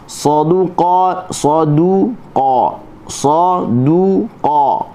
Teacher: Sa kita buka mulut. Tapi pangkal lidah terangkat, hujung lidah terangkat kerana dia bersifat dengan isti'la dan juga bersifat dengan itba'.